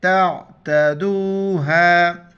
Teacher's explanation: عین کو گلے سے کریں گے ، تا عین زبر تا، تا زبر تا، دال و پیش